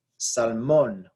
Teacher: this one actually does break the rule because it is salmon we stress the last syllable